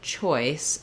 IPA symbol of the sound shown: ɔɪ